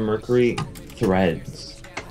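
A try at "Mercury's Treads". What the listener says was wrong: There's no H in there.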